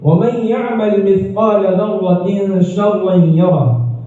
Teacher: یہاں تنوین کے بعد شین ہونے کی وجہ سے ایک الف کے بقدر غنہ ہوتا ہے ، لہذا اس کے پڑھنے میں تاخیر ہوتی